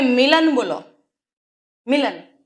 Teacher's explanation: લખાય તો જો તમે મિલન બોલો મિલન સરળતાથી બોલાઈ જાય છે ત્યાં ઈ ખેંચાતી નથી ઈ નું ઉચ્ચારણ ત્યાં ટૂંકું છે નાનું છે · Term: રસવઈ